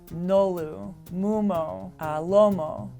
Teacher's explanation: These are all characterized by sonorant consonants, they're voiced consonants, and they all have rounded vowels.